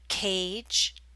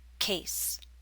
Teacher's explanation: the a in cage is longer because it's followed by a voiced consonant J in contrast the a in case is followed by a voiceless consonant s